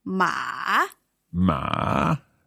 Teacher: the third tone is going down and up ma ma and the fourth tone is sharply done ma ma